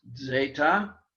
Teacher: a little softer Z, zeta. Something like if you were pronouncing it DS, zeta. It's the Z sound that the only Z sound that we have in Greek.